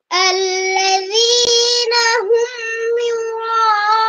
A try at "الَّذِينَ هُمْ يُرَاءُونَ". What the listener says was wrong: ইয়ার মধ্যে তোমার পেশ তুমি এটা গোল করো নাই। ইউ আল্লাযীনা হুম ইউরা ইউ দেখো ইউ ইউরা ইউরা রার উচ্চারণ উপর দিকে যাবে। ইউরা ইউরা ইউরাউন হ্যাঁ। يراءون ইউরাউন এই যে উন এটা গোল করতে হবে। উন এখানে পেশ আসছে উন।